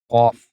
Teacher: While pronouncing qaf, you will make your lips round to make the sound thicker.